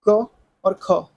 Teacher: इन ध्वनियों के उच्चारण में स्वर तंत्रों के कंपन नहीं होता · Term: अघोष व्यंजन